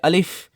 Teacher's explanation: আলিফে টান হবে না। হালকা একটু বাতাস বের হবে। মুখের খালি জায়গা থেকে।